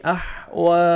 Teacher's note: واو کو 1 سیکنڈ کھینچیں گے، واو مدہ کے قائم مقام ہے